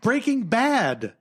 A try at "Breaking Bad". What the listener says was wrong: the emphasis is not on that it's breaking there is no emphasis